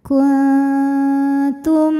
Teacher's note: Huruf ta makhrajnya masih dekat dengan nun sehingga bunyi dengungnya kecil. Jadi ini masih banyak aliran suara yang keluar dari mulut. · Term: ikhfa aqrab